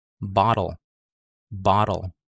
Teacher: i'm not using a traditional t it's a flap t sound